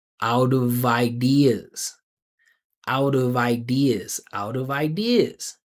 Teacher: it will be vi because it's consonant to v linking